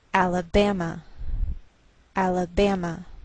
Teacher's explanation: the greater stress is on this third syllable